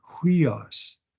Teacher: Notice the rough breathing for sun, huios. Put an H sound